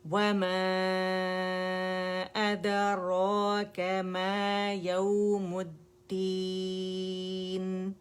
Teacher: ٹھیک ہے، اچھا اب یہاں پہ اگر آپ دیکھیں وما، اگر میں یہاں پہ سٹاپ کرتی ہوں نا ما پہ، تو روانی میں نے اسے اسٹریچ کیا کیونکہ پہلا جو ہمارا ورڈ ہے وہ مد پہ ختم ہو رہا ہے، دوسرا ورڈ حمزہ سے سٹارٹ ہو رہا ہے، تو دونوں کے درمیان فاصلہ ہے لیکن مد بن رہی ہے. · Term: مد فرعی